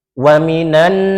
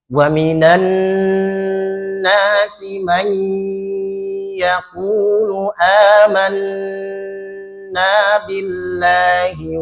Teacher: Coba kalau ada nun bertasydid, ada mim bertasydid, ah itu ditahan coba karena dia mempunyai sifat ghunah mutawwalah. Ghunah yang ditahan. Waminan tahan dulu itu ya.